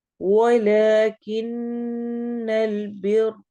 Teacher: نون شد کے ساتھ آ رہی ہے، نون غنہ ہوگا. بر رو کو بھی ہم موٹا پڑھیں گے.